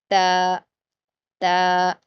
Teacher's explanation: आपके होंठ फैले रहेंगे तो यह बारीक पढ़ा जाएगा